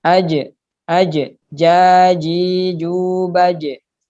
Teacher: ini berkaitan lagi dengan ngasih Fatul suruh namanya sifat Qalqalah memantul jadi nafas dalam hal ini huruf Jim tidak terdengar berdesis